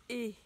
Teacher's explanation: Les lèvres sont écartées, la langue est relevée en avant